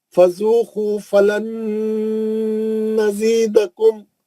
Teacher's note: نون ساکن کے بعد نون ہے, ادغام مع الغنہ ہے. نون ساکن کا ادغام مع الغنہ حرف نون, ابھی پڑھ کے آ رہے ہیں مثالیں نون کے بعد نون کی, ہے نا, غنہ کریں گے.